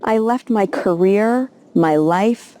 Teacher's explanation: she also uses really good intonation upwards intonation on the words career in life to show that there's more coming in the phrase · she stresses the words left, career, and life. Left has less stress than career and life because these are the two main things that she's trying to get across in this phrase. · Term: English stress